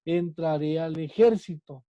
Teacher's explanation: es una palabra esdrújula. ¿Por qué? Porque su sílaba tónica es la antepenúltima sílaba.